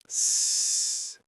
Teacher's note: Now make a S sound. S. Do you feel anything? Probably not. It's just air.